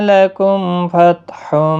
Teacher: لکم میم ساکن کے بعد فا اظہار شفوی ہوگا